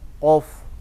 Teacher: makhrajnya qaf itu ada di pangkal lidah, agak ke dalam, pangkal lidah bagian dalam.